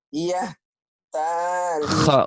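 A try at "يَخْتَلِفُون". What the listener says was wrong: Yakhtalifun. Yah. Mulutnya jangan dimonyongin. Yah. Mulutnya dibuka kayak orang senyum, Bu. Senyum. Yah. Kebayang, Bu, saya lagi senyum. Bibirnya dibuka. Bibirnya dibuka ya, Bu. Ya, mulutnya dibuka. Yah. Yah. Telepon. Jangan.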